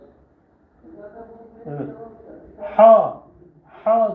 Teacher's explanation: gırtlaktan fırlatarak çıkaracaksınız fırlatarak